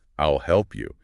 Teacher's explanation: Pronounce will naturally as eel when you speak fast.